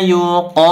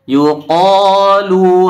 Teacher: dibaca Dua harakat dan ditebalkan qnya karena dia berbaris fathah